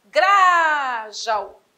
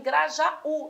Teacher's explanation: A tônica não pode estar no já, Grajaú. A tônica tem de estar em Grajaú, lá no U